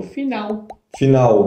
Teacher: E tem mais um detalhe, que em algumas regiões do Brasil, dependendo do sotaque, a gente fala o L no final da palavra como se fosse o som de U